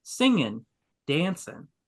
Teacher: dropping that G at the end of words because it's just easier to talk that way